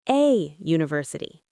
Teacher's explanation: University starts with a Y sound, consonant sound. So, we say a university.